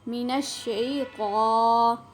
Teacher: طا کو آپ نے موٹا کر کے پر کر کے پڑھنا ہے